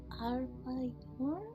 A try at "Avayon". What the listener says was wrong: No R, just Avayon. It even has an O somewhere in there that you can extend if you wanted to echo in a large cave.